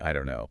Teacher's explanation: Well, we already hit I don't know becoming I don't know. That pattern of dropping the T and weakening the vowel in don't is super common.